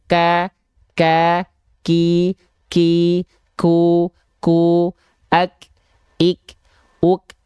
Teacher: Karena huruf kaf itu memang si suara tidak mengalir dan nafas hanya berupa percikan saja. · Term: percikan nafas